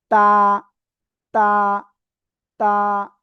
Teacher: জিব্বার আগা, এই উপরের 2 দাঁতের গোড়ায় লাগান, লাগান লাগান, লাগিয়ে সিম্পল এক আলিফ টানে উচ্চারণ করতে হবে।